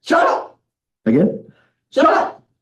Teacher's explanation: You don't aspirate the K at the end. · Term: glottal